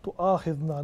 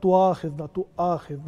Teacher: wherever hamza comes, it should be clear, like it has an edge to it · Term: hamza qati